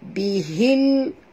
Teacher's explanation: Bunyikan lam yang mati dengan jelas tanpa lantunan. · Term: alif lam qamariah